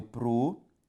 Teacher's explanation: Ao separar providência, eu tenho providências. Perceba que a sílaba tônica, portanto, é a penúltima, portanto, uma palavra paroxítona.